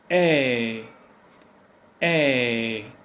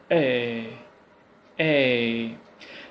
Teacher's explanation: The first point is that the sound is gliding, or the glide begins from open mid. Your mouth is open mid, front position, because the sound it comes from the front, like a, to more open, like okay, so the lips are neutrally open. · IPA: /eə/